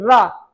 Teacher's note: रा तो दांत प्लस मसूड़ों में लगता है, इसलिए इसको दंत मूल मसूड़ा बोलते हैं